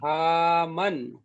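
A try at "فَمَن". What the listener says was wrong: পা টান হয়ে যাচ্ছে, হারাকাত টান হবে না। ফামান। জি, করুন এটি।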